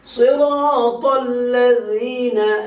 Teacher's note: ذال نکالنا ہے، لذینہ نہیں بولنا ہے اور لجینہ نہیں بولنا ہے